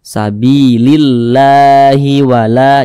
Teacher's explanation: Nah, kalau sebelum kalimat Allah itu ada huruf yang memiliki tanda baca kasrah, maka kalimat Allah dibaca tipis, dibaca tarkik